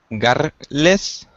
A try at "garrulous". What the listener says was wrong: Careful with your R. It doesn't roll. Garrulous. Garrulous.